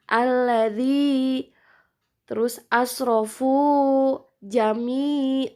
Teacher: Seperti zal kasroh itu bertemu dengan ya sukun, itu hukumnya matobi'i. Dan harus 2 harokat. 2 harokat bisa dengan cara mengayunkan, membacanya alladzi, terus asrofu, jami.